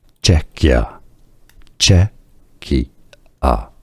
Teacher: Czechia. Stress on the first syllable.